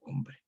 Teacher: Entonces quedaría el grupo hombre, pero difícil de articular, por lo tanto se intercala una consonante de tránsito que es una B, para facilitar la articulación entre estas dos continuas, la M y la R